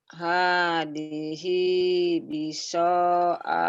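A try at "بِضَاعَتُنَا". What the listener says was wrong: Bukan biso Bu, ada titiknya. Bido.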